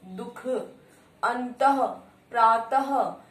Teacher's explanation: विसर्ग का जो उच्चारण होता है वो ह जैसा होता है